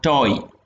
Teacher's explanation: You actually glide in towards the direction of a close vowel.